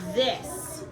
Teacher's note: sometimes this digraph has its voice turned on, and you'll hear the vibrations in your throat when you say it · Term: voice TH